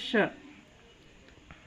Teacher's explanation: ಈ ಶ ಉಚ್ಚಾರ ಮಾಡುವಾಗ ಮೇಲಿನ ಹಲ್ಲಿನ ಹಿಂಭಾಗಕ್ಕೆ ಸ್ವಲ್ಪ ಟಚ್ ಆಗ್ತದೆ. ಆಮೇಲೆ ಉಸಿರು ಹೊರಗೆ ಬಿಡ್ತೀವಿ ಆವತ್ತಿನಾಗ ಬರ್ತದೆ ಇದು ಶ. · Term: ತಾಲವ್ಯ ಶ